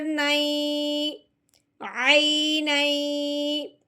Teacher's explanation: اب ہم نے نون کو یا مشدد کے ساتھ ملانا ہے اور ساتھ ساتھ غنہ بھی کرنا ہے۔ غنہ کرنے کی وجہ دو زبر ہیں، یعنی کہ تنوین ہے۔